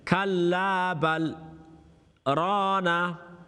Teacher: after bal is sakta, you've got to hold your stop and hold your breath for a couple of seconds.